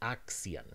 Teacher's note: then the [s] and the [k] sound switched places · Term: metathesis